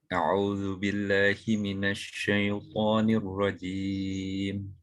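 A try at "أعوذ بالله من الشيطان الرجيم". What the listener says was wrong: Hindari imalah di dalam ta'awudz ya. A'udzu billahi minasyaitonir. Ketimbang kita membaca syaiton. A'udzu billahi minasyaitonir rajim. Syaiton.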